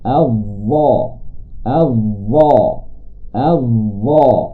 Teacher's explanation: Huruf yang terakhir iaitu dha juga menggunakan hujung lidah dan hujung gigi kacip atas, tetapi dengan sifat yang berbeza, iaitu dengan ketebalannya yang tinggi